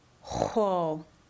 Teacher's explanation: pronounced the same as the X wedge, but with the lips rounded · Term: X wedge W